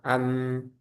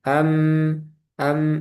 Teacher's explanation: Cara pengucapannya dirapatkan bibirnya. Idbaqus syafatain. Dirapatkan am sebagaimana membaca huruf mim dengan sempurna.